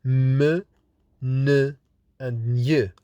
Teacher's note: So we have the first stage looks like plosives, the second stage looks like fricatives, and in this case we get ch and j, or through the nasal cavity by lowering the soft palate. When we lower the soft palate, the air will escape from the nasal cavity, not the oral cavity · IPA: /m, n, ŋ /